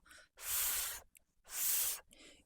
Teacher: Your teeth is placed against your lower lips, and you gently let some air come through, and that's how you make the sound f. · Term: F sound